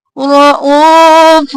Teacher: پر باریک کیونکہ اللہ کے لفظ سے پہلے زیر ہے، رؤوف، را جلدی سے اور موٹا ، او کو کھینچیں گے، وہ مدہ ہے، رؤوف، یہاں پر